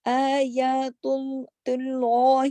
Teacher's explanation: اور اس کے بعد میں نے بتایا تھا نا کہ اللہ کا نام آنے سے پہلے اگر زبر یا پیش ہو تو وہ اللہ کے نام میں لام جلالہ یعنی لام موٹا پڑھا جائے گا